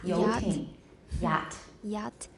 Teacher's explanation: The front of the tongue is raised toward the palatal area of the roof of the mouth, but it does not come close enough for a fricative sound to be produced. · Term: approximant